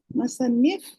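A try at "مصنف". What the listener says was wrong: थोड़ा सा एक कस जहमती दें कि मीम के ऊपर पेज दे दें, बस आपने सही पढ़ा। Just you need to do one thing, that you need to put पेज above मीम।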